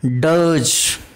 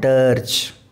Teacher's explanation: In British English we don't pronounce this r sound which comes in between, so it is called dirge.